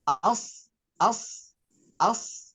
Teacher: huruf Shad punya sifat yang namanya istiah maka ujung lidah pangkal lidahnya naik ke atas